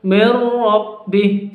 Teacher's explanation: Jadi bacaan idgham bila gunnah. Bacanya langsung masuk ke ro, langsung masuk ke ro tanpa disertai dengan dengung. Jadi tidak perlu didengungkan, tidak perlu dipanjangkan.